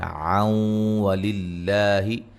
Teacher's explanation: لفظ اللہ کو باریک پڑھیں گے، اس سے پہلے حرف پر زیر ہے · ملانے کی صورت میں نون تنوین کا ادغام مع الغنہ ہوگا